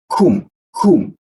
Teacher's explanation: Desis dia. Ada hembusan. Kum. Sifatnya jangan sampai hilang.